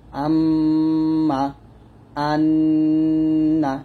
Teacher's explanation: আর নাকের পাশে হইতে গুণ্য উচ্চারিত হয় যখন আপনারা নুনের উপরে তাসদিদ এবং মিমের উপরে তাসদিদ পাবেন। নুনে অথবা মিমে তাসদিদ পাইলে গুন্নাহ করতে হবে, যাকে ওয়াজিব গুন্নাহ বলে